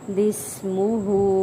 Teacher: سین میں سیٹی لائیں گے